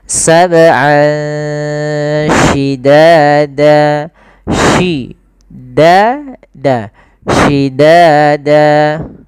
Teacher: Jadi terdengar seolah-olah dia ada eng gitu ya, tapi bukan ang, tapi dia ikhfa.